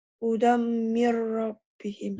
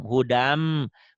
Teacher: Hudan, asalnya hudan ada n-nya. N-nya melebur ke M. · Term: Idgham biguna